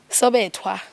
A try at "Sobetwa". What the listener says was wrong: There's no age, but you pronounce it as Sobetwa.